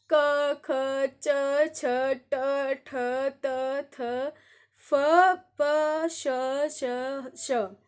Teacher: इसमें कोई भी स्वर तंत्रिका में कंपन नहीं हो रहा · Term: अघोष